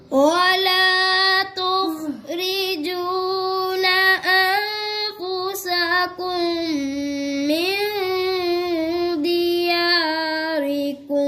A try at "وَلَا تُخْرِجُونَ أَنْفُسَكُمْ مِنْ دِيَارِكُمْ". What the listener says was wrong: आपने अन पर गुन्ना क्यों छोड़ दिया दो किए एक छोड़ दिया जी इरा बारीक है